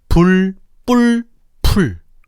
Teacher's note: 불 뿔 풀 뜻이 다르지. 예사소리 브 된 소리 뿌 거센 소리 프냐에 따라 뜻이 달라지고 있어. 즉 한국어에서는 예사소리, 된 소리, 거센소리라는 소리의 차이가 의문에 반영되고 있다는 거야.